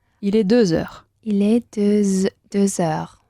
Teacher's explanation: Tienes que enlazar la consonante final con la palabra heure.